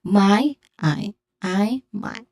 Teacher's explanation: The my has a diphthong I.